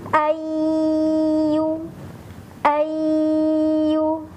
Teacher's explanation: huruf nunnya melebur dan langsung masuk ke huruf ya, ditahan selama 3 ketukan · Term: idgham bi gunnah